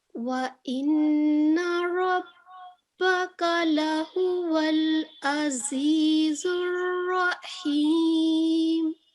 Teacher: آپ نے را کو بھی پر کر کے پڑھا